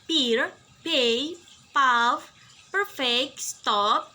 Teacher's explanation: P is unvoiced. P is described as voiceless bilabial stop.